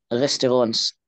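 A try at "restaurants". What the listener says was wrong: احنا الاس ننطقها في تكون في اخر الكلمة ريستورون ريستورون without S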